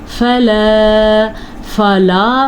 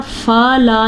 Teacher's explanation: फ़ा की मिक़दार आप नोटिस करें कितनी है और ला की मिक़दार कितनी, क्योंकि फ़ा के ऊपर सिर्फ ज़बर है लेकिन लाम के साथ आगे अलिफ मद्दा भी है, तो इसलिए हम इसको लंबा करेंगे।